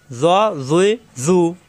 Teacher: জ, জিব্বার আগা দাঁতের আগায় কিন্তু মোটা হবে।